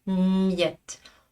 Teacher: je garde mes lèvres serrées un peu plus longtemps, quelques dizaines de millisecondes de plus. Miette. En plus, je prépare ma langue à la prononciation de y.